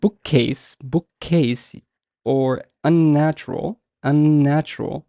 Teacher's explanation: you would realize that the n sound and the ke sound are doubled, or like prolonged, compared to bookish or natural. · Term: double consonants